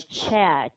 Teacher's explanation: for ch sound, this is a voiceless sound, and that means the vocal cord should not vibrate.